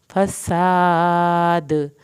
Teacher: सीन को सीटी की आवाज़ के साथ पढ़ना है, अलिफ को खींचना है, आखिर में दाल पे कलकला होगा।